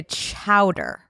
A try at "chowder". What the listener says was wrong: Well, when you say chowder like that, the emphasis on the chow, like I don't. Chowder.